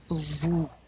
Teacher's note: The OU is ooh. You really want to round your lips.